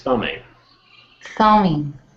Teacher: the B is quite often silent in this case